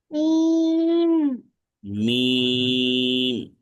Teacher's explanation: মিম উচ্চারণ করতে হবে দুই ঠোঁটের শুকনো অংশ থেকে